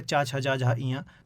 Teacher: इनमें तालु का प्रयोग होता है, जीव तालु को टच करती है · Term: चा वर्ग